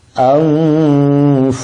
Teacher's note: Kalau ada nun sukun ketemu fa berarti dia harus dibaca ghunah, harus dipanjangkan.